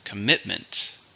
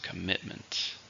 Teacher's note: 3, stress on the second.